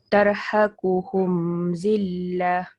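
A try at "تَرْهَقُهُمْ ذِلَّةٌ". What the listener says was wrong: Tu tutup mulut sikit Mim, jadi tak dengar macam dengung. Tak mau dengung. Tak boleh dengung. Tak boleh dengung. Sebab apa? Macam mana nak tahu clue dia? Mim dia tu ada. Mim dia ada sukun. Jadi tak boleh dengung.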